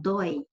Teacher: é monossílabo tônico, tem o ditongo oi, tônico, som aberto